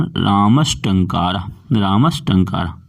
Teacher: यदि दंत सकार के बाद टा वर्ग आए तो दंत सकार का मूर्धन्य सकार हो जाए